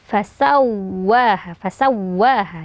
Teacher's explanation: mimnya jelas sempurna dulu mim baru masuk ke makhraj Fa fasawwaha ditekan sedikit karena wwnya bertasdid